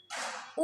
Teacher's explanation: ऊ जो है ओष्ठ से उच्चारित होता है